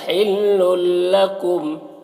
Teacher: حلل یہاں پر تنوین کے بعد حروف یرملون میں سے لام ہے تو تنوین کو لام سے ملا کر بغیر غنہ کے پڑھیں گے، اس کو ادغام تام کہتے ہیں